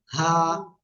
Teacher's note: হলো এইটা এই অক্ষরে আমরা এক আলিফ টেনে পড়বো এক আলিফ গলার শুরুতে হলকের শুরু থেকে আমরা এই অক্ষরটা উচ্চারণ করব হা এক আলিফ টান এটার গলাটা চেপে চাপা লাগবে না শুরুতে